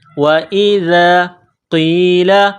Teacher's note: وَإِذَا قِيلَ، واو کو پڑھتے وقت ہونٹوں کو گول کرنا ہے. وَإِذَا، ذال کو نرم کرنا ہے، زبان باہر نکالنا ہے